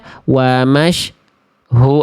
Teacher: huruf sin yang saya baca tadi bunyi atau suaranya itu terputus. Nah, bunyi atau suaranya terputus ya.